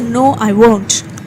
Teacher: Here you don't say no, I will not. Here you're stressing on no.